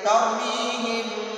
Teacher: में हम गुन्ना यानी इख्फा पढ़ेंगे, इस मीम साकिन को हम नाक में छुपाएंगे , तो पढ़ेंगे तरमीहिम, हिम गुन्ना इसलिए किया कि इस मीम